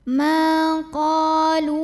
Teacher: Maka cara bacanya kita panjangkan lamnya ini sepanjang 2 harokat saja.